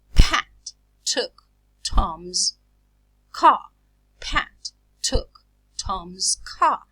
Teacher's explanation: I aspirate them because they occur initially in stressed syllables this aspiration is a puff of air between the release of